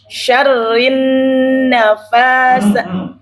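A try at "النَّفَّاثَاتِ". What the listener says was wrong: Bukan nafa. Nafa. Tashdid fa. Jadi tashdid ini pelajaran basic ya. Basic dasar banget. Keliru berubah makna.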